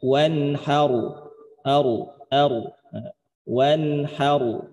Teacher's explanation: karena ro sukun sebelumnya ada fathah, maka cara bacanya ro sukun itu dibaca tebal. Jadi bukan dibaca har, tapi bacanya wanharu.